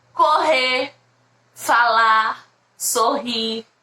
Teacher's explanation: Tem o R lá no final, mas é bem fraquinho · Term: R mais fraco